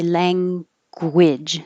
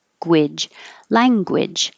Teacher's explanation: So when you round your lips, when you make your G, round your lips, gwidge.